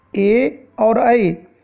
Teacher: जो कंठ और तालु के बीच का स्थान है, यहाँ से निकलने वाले वर्ण ए, और ऐ इसे कंठ तालव्य वर्ण कहते हैं